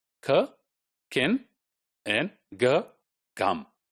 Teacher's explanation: They are stops, but the place of articulation is velar.